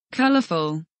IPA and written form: ˈkʌləf(ə)l (Colourful)